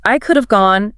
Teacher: they reduce the word have so much that it loses the H and the A. It just becomes a tiny barely there ave sound attached directly to the end of the first word. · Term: elision